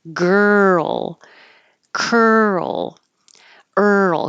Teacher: Keep your voice going as you move from the R to the L.